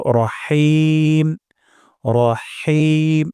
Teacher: আমরা এখানে হা উচ্চারণ করব গলার মাঝখান থেকে। · হা সময় বাতাস বের করে দিব এবং গলার মাঝখানে উচ্চারণ ব্যবহার করব।